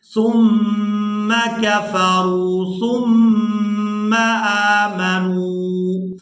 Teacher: یہاں میم مشدد پر غنہ کریں گے، یعنی غنہ کی آواز کو ناک کے بانسے سے ادا کیا جائے گا